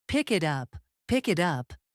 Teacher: The ending K connects to the vowel I. And the T becomes a soft flap sounding like a quick D.